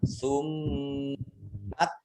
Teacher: Mim tasdid dibaca gunnah atau mendengung ya, ditahan 2 harokat.